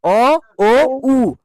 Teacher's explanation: ঠোট দুটো না কুঞ্চিত হচ্ছে মানে একদম জোড় হয়ে যাচ্ছে গোল মত হয়ে যাচ্ছে · উচ্চারণ করার সময় আমাদের ঠোট দুটো কি হয়? কম বেশি সংকুচিত হয় বা গোল হয় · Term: কুঞ্চিত বা বর্তুল স্বর